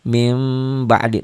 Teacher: bacanya agak bindeng-bindeng samar-samar dikit, dan bibirnya jangan rapet. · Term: iklab